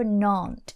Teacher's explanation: Sometimes you almost hear a nant instead of aunt.